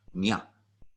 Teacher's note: A tilde over an N is a ñ sound. So you use the middle portion of your tongue up against the middle back portion of the roof of your mouth to kind of give it a NGY sound